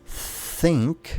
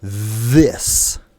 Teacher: notice how one is just air, and the other uses your voice · One's a whisper (unvoiced), and the other's a hum (voiced).